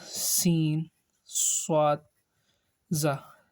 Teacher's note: So the sound of these letters like whistle, like high pitch sound. Okay, whenever we speak, or these letters sound are high pitched. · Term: huruf safiria